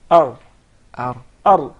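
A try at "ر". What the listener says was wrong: There is a repetition of the ra. He actually pronounced several ra's. We just want one ra. Ar. Ar.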